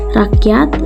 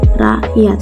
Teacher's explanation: Selanjutnya ada simbol tanda tanya pada huruf K dengan penyebutan hamzah, misalnya pada kata rakyat, huruf K tidak begitu jelas penyebutannya